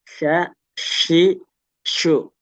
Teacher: Ingat syin dia punya sifat menyebar khusus ya.